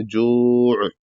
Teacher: اگر یہاں پر جو پہ رکتے ہیں تو عین کو واضح کر کے رکنا ہے